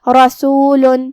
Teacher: را پہ زبر ہے تو ہمیں را کو تفخیم سے ادا کرنا ہے، مطلب ہم اسے بھاری آواز میں پڑھیں گے